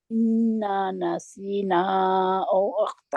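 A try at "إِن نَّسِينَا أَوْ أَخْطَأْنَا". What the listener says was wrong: अच्छा, इन्ना नसीना नहीं है मेरी बहन, इन नसीना। ये इन्ना जो है, ये नून जो है जज्म वाला, जब शद वाला हर्फ आ जाता है ना, तो जज्म वाला हर्फ जो है वो उसकी कोई कदर नहीं रहती, कहते हैं वो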